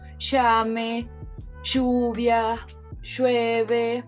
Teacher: con la sh va a ser un sonido más estridente, por lo cual es una fricativa palatal sorda. Es decir, que nosotros no vamos a sentir la vibración, como por ejemplo en palabras como llame, lluvia, llueve.